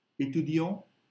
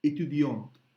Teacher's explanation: we skipped the T. But when we added a to make it feminine, we had to pronounce the T.